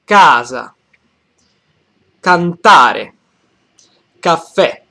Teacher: the accent falls on the first syllable, the syllable in the middle, and the last syllable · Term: main stress